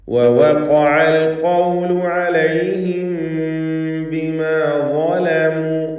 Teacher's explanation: ആവർത്തിച്ച് ഖാഫ് വരുന്നു. ഇസ്തിഅലാന്റെ ഹർഫാണ്. തഫ്ഖീം ചെയ്ത് തടിപ്പിക്കേണ്ട ഖാഫ്.